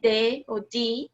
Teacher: Então, se você colocar a mão na garganta, por exemplo, a gente tem o D aqui, e você falar D ou D em inglês, você vai ouvir a sua garganta vibrando, as suas cordas vocais vibrando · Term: voiced sounds